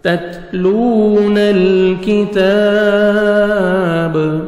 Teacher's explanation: با ساکن ہو جائے گا، اور با حروف قلقلہ میں سے ہے، ڈبل ساؤنڈ آئے گا۔